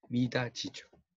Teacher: 디귿, 티읕이 이 앞에서 지읒과 치읒으로 바뀌는 거예요